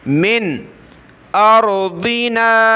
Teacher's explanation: نون پر ناک میں آواز پیدا نہیں کریں گے کیونکہ آگے حمزہ ہے